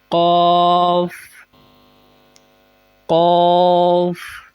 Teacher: قاف زبان کی جڑ اور تالو کے نرم حصے سے